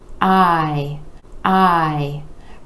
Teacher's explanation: the I vowel sound where that jaw is dropping down and coming back up